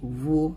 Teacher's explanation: পেশ উভয় ঠোঁট মিলানো অর্থাৎ দুই ঠোঁট গোল করার দ্বারা উচ্চারিত হয় দুই ঠোঁট এমন ভাবে গোল করা যেন উভয় ঠোঁট দুই দিক